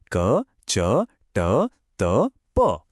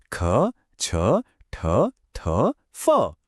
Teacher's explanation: देखिए यह वो कोंसोनेंट्स हैं जिन्हें बोलते समय हमारे वोकल कॉर्ड्स मतलब जो आवाज पैदा करने वाली तंत्रियां हैं उनमें कोई खास वाइब्रेशन या कंपन नहीं होती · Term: अघोष व्यंजन